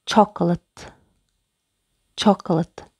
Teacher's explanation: Екпін бірінші буынға түсіп тұр. Яғни бірінші буынның дыбысын анық оқимыз. Чок. Чок деп.